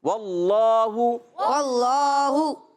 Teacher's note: اللہ پاک کا لام موٹا پڑھیں گے، اس سے پہلے زبر ہے